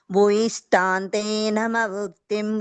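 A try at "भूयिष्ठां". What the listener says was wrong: ఇది ఒక్కటి పోయింది ఏంటంటే భూయిష్ఠ అంతే. ఓకే, అదొక్కటి దీర్ఘం పెట్టండి అంతే.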